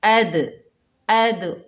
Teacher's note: साकिन हालत में आ रहा है, तो दाल की डबल साउंड आएगी। अद, अद, रॉ के ऊपर खड़ा ज़बर, 1 अलिफ की मिकदार खींचकर पढ़ेंगे। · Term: हरूफ कलकला